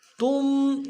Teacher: تا کو میم ساکن کے ساتھ ملانا ہے، میم ساکن میں غنہ کریں گے